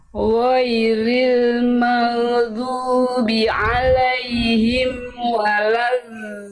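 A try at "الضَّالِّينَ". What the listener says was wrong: Oke, huruf dot, Bunda, do, jangan da, bo. Angkat pangkal lidahnya, coba Bunda, bo. Itu masih da, do. Itu pangkal lidahnya belum naik. Dilatih lagi pangkal lidah Bunda. Lalu huruf dot di mana makhrajnya? Tempat keluar huruf dot dari mana Bunda?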